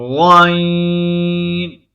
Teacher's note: زبان کی جڑ کو تالو کی طرف بلند کرتے ہوئے موٹی آواز میں غائن کو ادا کریں گے